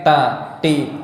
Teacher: Mungkin orang-orang timur ya mengucapkan ta dengan ta dari bagian tengah langit-langit. Ta, ti. Nah, ini salah.